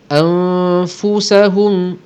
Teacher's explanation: Hukum dia ikhfa hakiki. Kita dengungkan dengan dengung 2 harakat kadarnya